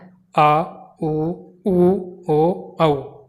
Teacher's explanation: इनको बोलने में जो है वो जीभ का जो पीछे का भाग है वह क्रियाशील होता है। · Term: पश्व स्वर